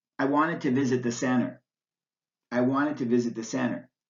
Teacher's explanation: the T sound also drops out completely after the letter n before an unstressed vowel